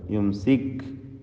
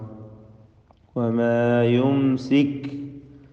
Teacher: യുംസിക് കാഫ് മഹ്മൂസും ഷദീദുമായ അക്ഷരമാണ്.